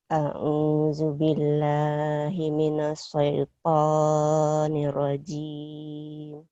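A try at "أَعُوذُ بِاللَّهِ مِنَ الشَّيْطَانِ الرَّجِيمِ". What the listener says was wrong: Nah, sinnya himinas. Himinas sinnya. Belum. A'udzu billahi minasyaitonir rajim. Sinnya belum keluar.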